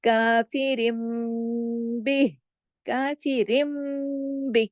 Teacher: یہاں پر تو دو زیر کی تنوین ہے، لیکن ہم نے یہاں پہ کافرن نہیں پڑھا، رم پڑھا، رم. آخر میں میم کی آواز آ رہی ہے.